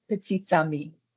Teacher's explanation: there's a T sound that you do pronounce in case your next word starts with a vowel